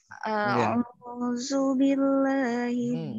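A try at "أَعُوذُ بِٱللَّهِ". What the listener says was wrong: Jangan zu. Jangan zu, jangan zu.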